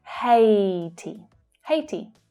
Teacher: So here the AI is pronounced A in the same way as day. It's the same vowel sound. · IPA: /eɪ/